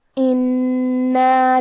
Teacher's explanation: حرف النون پہ تشدید ہے، لہذا ہمیں 2 حرف کے برابر نون کو پڑھنا ہے